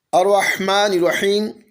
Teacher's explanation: یا ساکن سے پہلے جب زیر آئے تو یہاں پر یا مدہ ہوگا، اس کو لمبا کر کے پڑھنا ہے